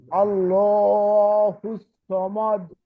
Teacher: আরেকটু লাম মোটা হবে